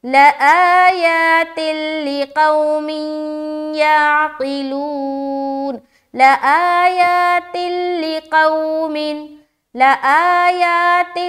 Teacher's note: ادغام تام جو بغیر غنے کے ہوتا، تو یہاں پر رکاوٹ نہیں کرنا، جلدی پڑھ کر نکلیں گے